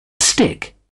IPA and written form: stɪk (stick)